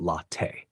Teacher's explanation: The emphasis is on the first syllable, la, and the second syllable, te, should be pronounced quickly and lightly. It's a bit like saying la and te smoothly together.